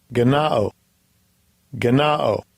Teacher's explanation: So the A is ah. It's not A like eight. It's like Allah.